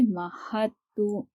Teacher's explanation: تو تشدید سے پہلے والے حرف پر اگر ساکن ہو، جزم موجود ہو، تو اس حرف کو نہیں پڑھیں گے. تو دال کو ہم نہیں پڑھیں گے، ہا کو تا سے ملا کر پڑھیں گے